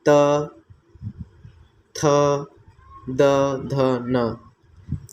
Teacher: इसको हम दंतव्य व्यंजन कहते हैं, क्योंकि यह दांत की सहायता से बोले जाते हैं।